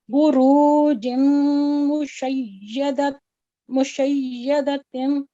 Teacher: यहाँ पे पहला जो बू है उसको हमने, ये जो है इस पे दम्मा है, 1 सेकंड देंगे। बुरू जो है ये मद्दे असली में से वाम मद्दा है, 2 सेकंड देंगे · मीम मुशद्दद है तो यहाँ पे गुना होगा